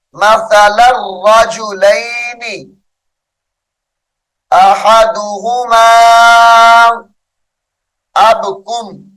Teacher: تنوین کے بعد حرف یرملون میں سے را آ رہا ہے، غنہ نہیں ہو رہا